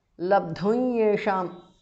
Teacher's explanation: Anuswara changes to the nasal of ya.